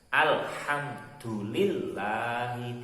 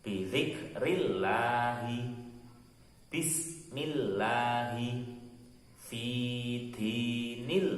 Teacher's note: Lam jalalah harus dibaca tipis atau tarqiq bila sebelumnya ada huruf yang berharokat kasroh. Kalau tadi yang tebal itu harokatnya sebelum lamnya itu ada harokat fathah atau dhammah, sekarang berharokat kasroh, huruf sebelumnya berharokat kasroh.